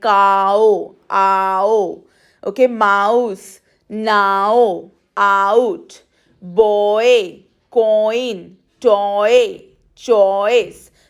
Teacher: So in these sounds, we are moving from one vowel to the second one. We are gliding.